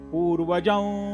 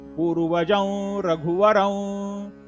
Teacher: ज वरती अनुस्वार आहे, पुढे र हे अक्षर असल्या कारणानं अनुनासिक औंचा उच्चार होतो